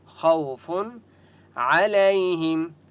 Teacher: خا مستعلیہ میں سے اس لیے خا کو موٹا پڑھیں گے · عین کی آواز آپ نے حلق سے نکالنی ہے